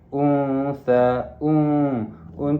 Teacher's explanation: ikhfa hakiki. Dibaca dua harakat tidak terlalu dengung dan tidak terlalu jelas. Sa di sini adalah mad asli.